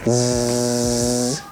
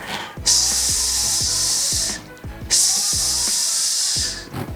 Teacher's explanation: You should feel your vocal cords vibrating when you produce that sound Z, but when we make that sound S, nothing is moving. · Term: voiced and voiceless sounds